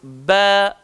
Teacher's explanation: pada huruf ba yang kita sebut, dia melibatkan dua bibir. Dan saat kita melepaskan bunyinya, lembut.